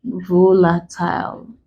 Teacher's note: we stress them on the first syllable, the very first syllable.